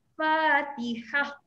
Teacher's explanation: Bunyi ta marbutah dah hilang.